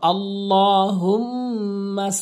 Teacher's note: হুম ওয়াজিব গুন্না গুন্না করে পড়তে হবে নাকের ভিতর নিতে হবে